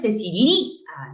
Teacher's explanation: No es Cecilia, no, es Cecilia, con la fuerza de voz en la abierta A